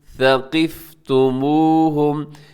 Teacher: اس میں قاف موٹا پڑھا جائے گا، اس کا خاص طور پہ خیال رکھیے گا۔